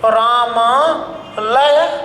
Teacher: अर्थात एक छोटा स्वर एक बड़ा स्वर, दो समान स्वर आपस में मिलकर एक बड़ा स्वर में बदल रहा है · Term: स्वर संधि